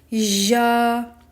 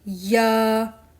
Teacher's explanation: In this letter ya, the middle of the tongue rises up close to the roof. Tongue is not pressed hard and no space between the tongue and the hard palate. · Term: ya non-mad